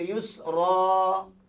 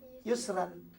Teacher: Kalau waqaf, kita baca yusra. Kalau terus kita baca yusran. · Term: mad iwad